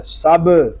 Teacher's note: سین با زبر سب، اس کو سب نہیں پڑھیں گے بلکہ با ساکن ہے، اس میں کلکلہ خوب ظاہر کریں گے